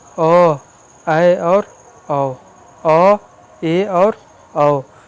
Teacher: अर्धविवृत में जिसमें मुख आधा खुला रहे